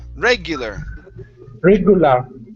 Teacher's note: Instead of regular, it's regular. The stress is at the very beginning.